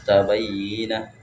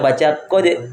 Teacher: Jadi cara membacanya huruf dalnya dimasuk di huruf ta. Jadi dal enggak terbaca lagi.